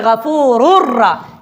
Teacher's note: یہاں پر غفور نہیں پڑھتے بلکہ غفور الرا، اس تنوین کو را بنا کے اور را کو را میں مدغم کرتے ہیں، تو لہٰذا یہ اس کو کہتے ہیں ادغام۔